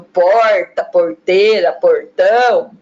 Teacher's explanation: nós encontramos pessoas que fazem o R caipira, o chamado R retroflexo